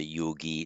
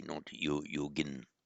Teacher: the in becomes a long e in the masculine singular, so that's why we say yogi, not yogin.